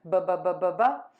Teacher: You're just going to open your lips, ba, ba, ba, ba, ba. And the air puffs out, voice box is on and moving.